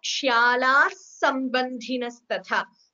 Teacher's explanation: While chanting together, it becomes a sandhi. Instead of the visarga, we get a s, extra s there.